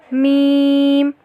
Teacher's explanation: میم دونوں ہونٹوں کے خشکی والے حصے کے ملنے سے ادا ہوتا ہے